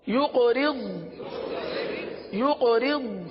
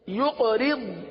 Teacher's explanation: اب یہاں قاف پر قلقلہ کریں گے، را کو تو باریک پڑھیں گے لیکن ضاد کو پر پڑھیں گے